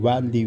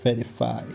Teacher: the upper teeth coming down on the lower lips